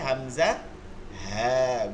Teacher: 1 নম্বর মাখরাজ হলকের শুরু হইতে